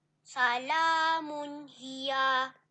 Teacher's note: Tanwin bertemu ha maka dinamakan izhar halqi. Bacaannya kena jelas, nyata, tanpa dengung.